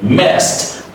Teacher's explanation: So final D would be the soft T